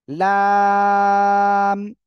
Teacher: আগা আগার কিনারা বাম পাশ ডান পাশ যেকোনো পাশে হতে পারে জিহ্বার আগার কিনারা তার বরাবর উপরে তালুর সঙ্গে লাগাবেন লাগিয়ে উচ্চারণ করবেন